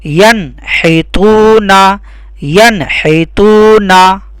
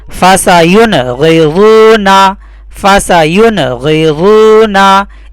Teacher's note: ہم کو نون کو سائلنٹ نہیں کرنا ہے، اخفا نہیں کرنا ہے، ظاہر کر کے پڑھنا ہے